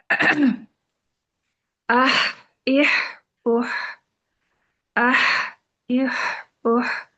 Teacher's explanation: اس میں ہمس بھی ہے اور اس میں رخاوہ بھی ہے، یعنی سانس بھی جاری رہے گی اور آواز بھی جاری رہے گی